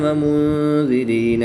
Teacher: نون ساکن کے بعد ذال حروف اخفا میں سے ہے تو یہاں پر اخفا ہوگا، یعنی غنہ زمانی کر کے پڑھیں گے